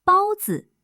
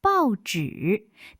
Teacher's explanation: 包子，第1声加轻声；报纸，第4声加第3声，一个平，一个降